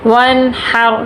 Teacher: نون پہ غنہ نہیں کریں گے، نون ساکن ہے